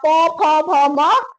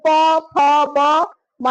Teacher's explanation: यानी होठों के स्पर्श से हमारा प वर्ग का उच्चारण हो रहा है